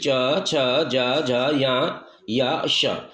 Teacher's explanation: ये तालु से निकलते हैं, इसलिए इनको तालव्या तालव्या वर्ण की संज्ञा दी जाती है